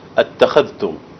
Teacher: أنبه على التفخيم في الخاء أتخذتم